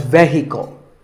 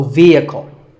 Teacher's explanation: the e is a long vowel and the h is silent